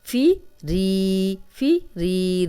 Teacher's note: ری یائے مدہ ہے، جزم والی یا، پیچھے را پہ زیر، 2 حرکات لمبا کریں گے، نون کے زبر کو لمبا ہونے سے بچائیں گے۔